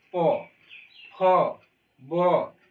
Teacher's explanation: ओ वर्ग, ओ जो बोल रहे हैं पो फो बो भो, तो ये दोस्तों ओष्ठ, ओष्ठ मतलब ओठ से बोलते हैं। जैसे पो बोलेंगे तो हमारा दोनों ओठ सटेगा, पो फो बो सट रहा है ना।